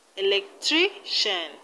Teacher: in electrician we have the stress on tri